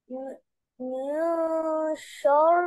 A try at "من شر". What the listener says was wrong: नहीं, फिर मोटा कर दिया ना।